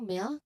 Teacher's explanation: Okay, and finally for this slide, the LK cluster as in milk. So here the L sound transitions directly into the K sound at the end